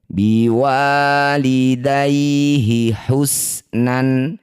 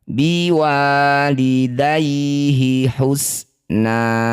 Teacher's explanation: Cara bacanya bunyi fathah tanwin ganti jadi fathah panjang. Jadi awalnya biwalidayhi husnan, saat dihentikan biwalidayhi husna, 2 harokat saja. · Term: mad iwad